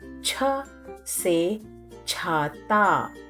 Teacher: Pronounce cha as you pronounce cha in chair but with ha sound